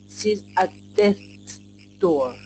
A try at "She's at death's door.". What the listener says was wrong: That was really good. A little more SH.